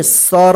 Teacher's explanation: जो लास्ट वाला अक्षर होता है बिना मात्रा वाला उसमें जो है ना अ का उच्चारण नहीं होता है